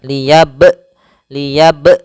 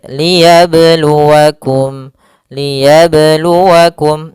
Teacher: tidak boleh ada tambahan Hamzah ataupun berhenti akan tetapi dia mengalir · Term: Qalqalah Sugra